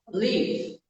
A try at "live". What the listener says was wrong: Quase bom. Quase bom. É essa mesma questão, né? Porque tá com i. tá com i, tenta colocar um e. Então vai ficar live. Live, né? E não i. Porque se você falar com som de i, fica o verbo partir. Então, leave e live.